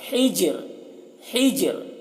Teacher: ہا کو حلق سے ادا کریں گے اور را کو باریک پڑھیں گے